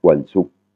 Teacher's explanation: Vendredi, Wansuk. Pareil, intonation qui tombe sur la dernière syllabe et une voyelle courte, qui est le OU